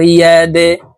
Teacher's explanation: या दाल जबर यादे, দাল কলকলার হরফ নিচের দিকে ধাবিত করে ধাক্কা দিয়ে উচ্চারণ করব।